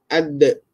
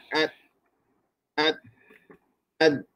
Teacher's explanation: huruf dal ada keistimewaan pada qalqalah. Maka ketika dia sakin, maka lantunannya lebih ketara.